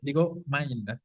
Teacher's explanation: ¿Cómo suena ahí la vocal I? Como una A, ¿no?